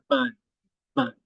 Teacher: when we say B larga, la B larga is bilabial